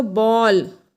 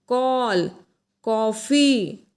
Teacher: इसे अर्धचंद्र कहते हैं। ये हमेशा आ और ओ के बीच की ध्वनि निकलती है मुंह से।